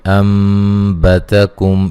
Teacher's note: अम्बतकुम यहाँ नून साकिन का इक़लाब है, नून को मीम से बदल देंगे